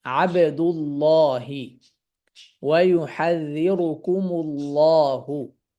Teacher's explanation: অর্থাৎ দম্মা দিয়ে যখন আমরা পড়বো, তখন আমরা আল্লাহ শব্দকে মোটা করে পড়বো।